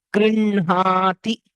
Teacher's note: When we pronounce it, the hakara with nakara is pronounced as grinhati.